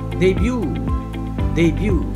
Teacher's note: the word would be stressed on the first syllable debut debut in american english the stress would be on the second syllable